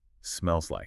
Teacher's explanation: The e at the end of smells pushes right up against the L in like. >> So instead of two distinct words, it sounds like one unit.